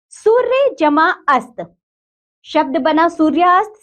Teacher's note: का मेल हुआ है यानी कि आ बना उपयुक्त शब्दों में सूर्य का अ और अस्त का अ परस्पर मिलकर आ हो जाते हैं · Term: संधि